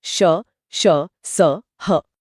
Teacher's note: इनको बोलते समय हवा मुंह में घर्षण के साथ निकलती है जिससे यह गर्मी पैदा होती है। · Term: संघर्षी व्यंजन, ऊष्म या संघर्षी व्यंजन